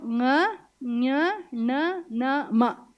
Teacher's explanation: ङ ಞ ಣ ನ ಮ ಇವುಗಳು ಅನುನಾಸಿಕಾಹ, ಮೂಗಿನ ಸಹಾಯದಿಂದ ಬರೋದು.